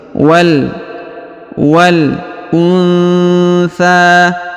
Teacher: Huruf nun sukun bertemu tha ya. Maka didengungkan dan disamarkan sebagaimana pelajaran Iqra 6 ya.